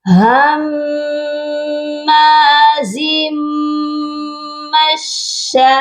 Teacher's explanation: اور یہاں پر دیکھیے بڑی مد ہے، مد کی مقدار کو ہم نے 5 الف کے برابر لمبا کرنا ہے